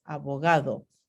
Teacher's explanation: Ahora, estas tres consonantes oclusivas, badaga, tienen alófonos aproximantes cuando ocurren entre vocales